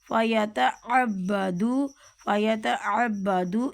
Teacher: عین کو حلق سے نکالنا ہے اور با کے اوپر تشدید ہے تو ذرا سختی کے ساتھ بولنا ہے